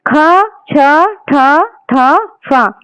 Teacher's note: इनमें जो उच्चारण है इनका इसमें स्वास अधिक निकल रही है तो ये हो गए महाप्राण।